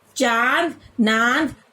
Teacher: हवा नाक तथा मुख दोनों के दबाव के साथ बाहर निकलती है। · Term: अनुनासिक